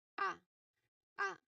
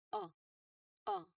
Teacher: notice that letter A is much wider compared to letter O.